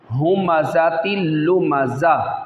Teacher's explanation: وقف کی حالت میں گول تا جو ہوتی ہے وہ ہا ساکن سے بدل جاتی ہے، گول تا نہیں رہتی بلکہ وہ ہا سے بدل جاتی ہے، ہمزۃ لمزہ۔